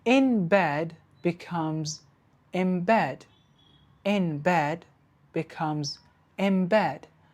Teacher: the n sound changes to a b sound, a b sound, to match the next sound, which is the b sound. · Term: assimilation